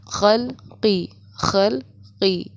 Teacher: آگے کے حلق سے قاف کی اور بیچ کے حلق سے ہمیں خا کی ادائیگی کرنی ہوتی ہے